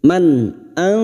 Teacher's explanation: dengan en huruf ini ini harus kita hafalkan karena nun sukun harus dibaca jelas atau tanwin yang harus dibaca jelas tanpa mendengung